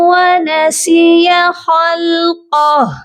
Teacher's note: وقف کرتے وقت ہم ہا کو سائلنٹ بھی کرتے ہیں. یہاں پر ہم نے ہا کو ساکن کرنا ہے تو یہاں اس کی الٹا پیش کو نہیں پڑھیں گے.